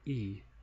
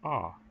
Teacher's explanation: So that holds true if you make the sound E, your mouth isn't as open as when you pronounce the sound ah